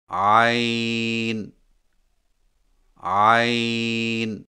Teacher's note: عین کی ادائیگی میں زبان کی جڑ کو حلق کی طرف مضبوطی سے دباتے ہوئے باریک اور رگڑ کھاتی آواز میں پڑھیں